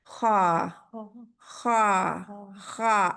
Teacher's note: زبان کی جڑ پیچھے سے اٹھی ہوئی ہے. یہ زبان کی جڑ جو ہے پیچھے سے اوپر اٹھی ہوئی ہے، اور یہ اس کا مخرج ہے.